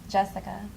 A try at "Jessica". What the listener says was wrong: Jessica. Now I'm matching your pitch. Do you hear that? Jessica. Yeah, and you don't need to hesitate.